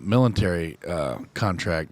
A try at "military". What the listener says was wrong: Did you put an N in that word? I think you said military.